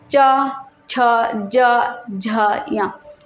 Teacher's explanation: जब च वर्ग का करिएगा तो च वर्ग का जो है तालु से उच्चारण स्थान हो जाता है। च, छ, ज, झ, य, ये जो है तालु से होता है।